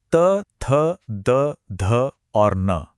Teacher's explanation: जब हम इन्हें बोलते हैं तो हमारी जीभ की नोक सीधे ऊपर वाले दांतों के पीछे लगती है। बस वो हल्का सा स्पर्श ही इन ध्वनियों को इतना साफ और तीखा बनाता है।